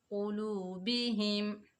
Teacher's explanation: قاف حروف مستعلیٰ میں سے، اس کی آواز موٹی ہوگی، واو ساکن سے پہلے پیش ہے، یہ واو مدہ ہے، اس کو ایک الف کی مقدار کھینچ کر پڑھیں گے۔ باقی نیچے زیر بغیر کھینچے پڑھیں گے۔